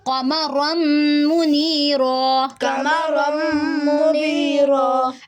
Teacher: رن نہیں پڑھیں گے، رم، کیونکہ ادغام ہو رہا ہے